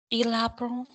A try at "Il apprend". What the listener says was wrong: That's it.